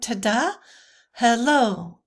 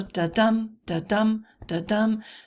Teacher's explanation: a metrical foot of two syllables where the accent uh lies on the uh second syllable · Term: I Amic